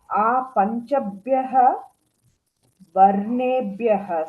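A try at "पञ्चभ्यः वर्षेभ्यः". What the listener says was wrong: Varshebhyaha. Shakara, that one.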